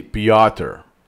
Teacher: Most of the time I say Pioter I'm adding schwa, a sneaky schwa there